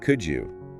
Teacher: >> Yes, "could [music] you." In fluid American English, the D and the Y merge together [music] into an entirely new sound. It morphs into a single syllable. >> It sounds identically to the letter Q.